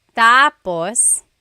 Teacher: When the emphasis is on the first syllable, tapos, then it means next.